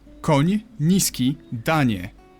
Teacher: You start with an N and soften it to ni.